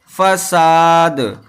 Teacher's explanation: فا ہوتا ہے اس میں سیٹی کی آواز نہیں ہوتی ہے، اسی طرح سین جو ہوتا ہے اس کے اندر سیٹی کی آواز ہوتی ہے